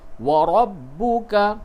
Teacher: रा को पूर करके पढ़े यानी मु भर के आवाज निकलेगी · را کو پر کر کے پڑھیں، یعنی منہ بھر کے آواز نکلے گی